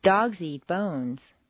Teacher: We go up and down staircases. We start high and end low. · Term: Staircase intonation